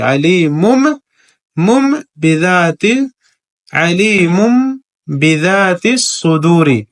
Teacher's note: تنوین کے بعد فوراً با ہے تو قاعدے کے مطابق یہاں پر بھی اقلاب کریں گے یعنی تنوین کو میم سے بدل کر کے پڑھیں گے با آنے کی وجہ سے.